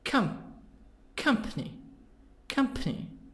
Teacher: so this word is three parts three syllables stress in the beginning · company stress in the beginning